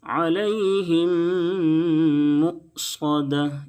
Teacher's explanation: میم ساکن کے بعد دوسرا میم ہے، دونوں میم کا آپس میں ادغام ہو جائے گا، اس کو ادغام شفوی کہیں گے.